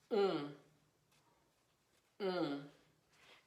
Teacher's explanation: you have is o-n sometimes it's o-m and that's pronounced um it's like you're putting the n or the m sound in your nose and it's rather round and dark also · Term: nasal